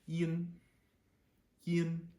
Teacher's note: you'll feel it a little bit more higher in your head you might feel your nose vibrate a little bit when you say it the right way